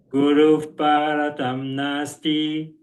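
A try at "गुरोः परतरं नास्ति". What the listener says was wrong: Gurof, long O. O is always long. Gurof. You have to say the word Gurof.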